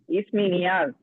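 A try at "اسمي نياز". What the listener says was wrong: इसमी, ऐसा फास्ट मत बोलिए, ऐसा रट के आया जैसा। इसमी नियाज।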